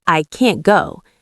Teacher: If you are waiting for that t sound, you will never hear it. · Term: invisible T